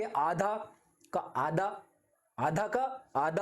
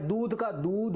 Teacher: इसके उच्चारण में अल्पप्राण वर्णों की प्रवृत्ति मिलती है